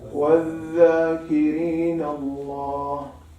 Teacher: when you say dhal, tongue is relaxed, so there won't be any elevation to the tongue. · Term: istifal